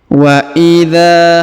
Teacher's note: huruf dza dipanjangkan dua harakat karena di depannya terdapat Alif